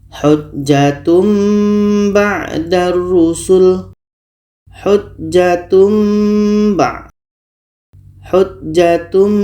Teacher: bunyi tanwin kita tukar kepada mim dan kita dengungkan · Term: iqlab, iklab